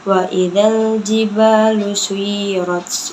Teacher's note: alif lam qamariyah karena alif lam bertemu dengan huruf jim. Cara bacanya itu alif lamnya dibaca jadi wa idzal jiba matobi'i karena alif bertemu dengan harokat fathah sebelumnya.